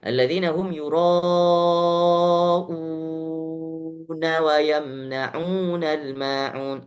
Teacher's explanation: Mereka kalau misalnya tidak mewakafkan, melanjutkan, mewasalkan dengan ayat setelahnya, maka badal di situ yura'una dibaca lebih daripada 2 harokat. Bisa jadi 5 harokat. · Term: mad badal